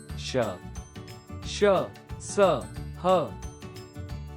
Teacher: इनका उच्चारण करते समय प्राणवायु मुख के भागों से घर्षण करती हुई अनुभूति देती है, इसलिए इन्हें ऊष्म गर्म व्यंजन कहा जाता है। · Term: ऊष्म व्यंजन